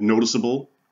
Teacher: notice the c sounds like an s right that's what we mean by a soft c